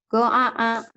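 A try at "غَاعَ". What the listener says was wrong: Ainnya sama ainnya sama hamzahnya beda nih. Go'a. Go'a. Alif dulu baru ain.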